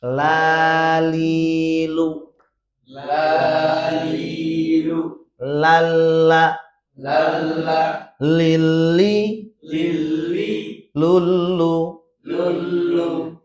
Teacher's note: ujung lidah sampai ke akhirnya nempel ke langit atas bagian depan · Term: huruf lam